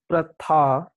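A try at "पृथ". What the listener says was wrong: Not pratha. Is pru. It is pratha. Not pratha. Not pra. It is pr. It is not a conjunct concept. Pr. Pratha. Say pr. Pratha.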